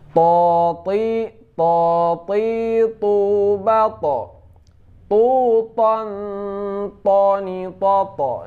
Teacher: Selanjutnya to, ini jahar juga, tidak keluar angin.